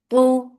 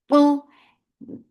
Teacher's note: Tu, ta is heavy. For dhamma circle lips, the sound is short, but it should be very nicely heavy.